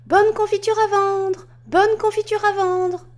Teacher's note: Ici, on adopte la façon de parler d'une vendeuse ambulante. Le ton vif reflète la détermination, le volume assez élevé s'apparente au cri.